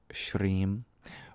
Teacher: it's not voiced and indeed that's the sh sound